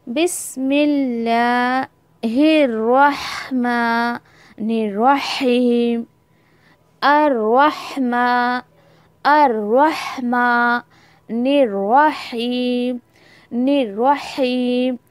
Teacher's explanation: مان الرحیم، ماں بولتے ہوئے نون کو فوراً اٹھا کے را کے ساتھ ملانا ہے آپ کو